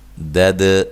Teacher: دال پہ قلقلہ ہے، ہلا کے پڑھیں گے